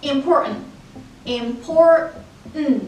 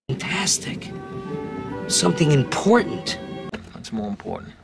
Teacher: ال T اللي بتيجي بعد ال N بتبقى drop T